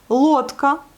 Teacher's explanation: il est accentué et on le prononce bien le O.